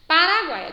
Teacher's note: encontro de três sons vocálicos em uma mesma sílaba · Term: tritongo